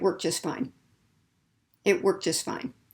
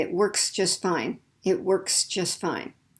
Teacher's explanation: we're going to minimize it or just get rid of that voiceless ed ending